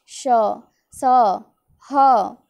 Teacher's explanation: इन व्यंजनों के उच्चारण के समय वायु मुख से रगड़ खाकर ऊष्मा पैदा करती है, यानी उच्चारण के समय मुख से गर्म हवा निकलती है। गर्म हवा निकलेगी जब आप इसका उच्चारण करते हैं, जैसे श। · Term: ऊष्म व्यंजन